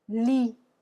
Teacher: You're only pronouncing the L and the I. Okay, not the T. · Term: silent